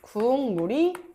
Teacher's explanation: 뒤에 있는 비음 미음이 앞에 있는 기억에 영향을 주어서 기억은 뭘로 발음이 된다? 이응으로 발음이 된다. 그래서 국물이 된다.